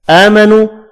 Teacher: آمنو حمزہ کے اوپر کھڑی زبر ہے، 1 الف کی مقدار میں کھینچ کر پڑھیں گے